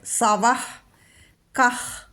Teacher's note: സവഹ കഴിഞ്ഞിട്ട് കഹ വന്നതുകൊണ്ട് ഹ ചൊല്ലണം, ജിഹ്വമൂല്യം